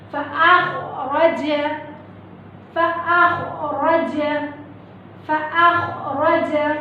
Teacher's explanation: ये है खौ, ये मखरज अदना हलक से निकलेगा।